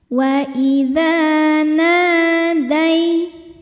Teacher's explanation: Ada hukum harfulin atau huruf lin. Sebab ada ya sukun didahului harokat fathah, maka dibacanya dilembutkan atau dilunakkan saja. Jadi jangan dipanjangkan.